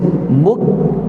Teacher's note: keluarkan angin untuk kaf kita panggil hamas. Buk, sifat hamas yang ada pada kaf.